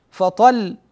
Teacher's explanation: وحينما تقرا قوله تعالى فان لم يصبها وابل فطل هكذا و تقف على اللام تجد ان الصوت لم ينحبس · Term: حروف التوسط